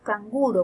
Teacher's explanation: cuando decimos canguro, por ejemplo, al lado de una velar, la N se velariza